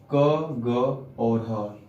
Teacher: कंठ से उच्चारण होते हैं ये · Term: कंठ ध्वनि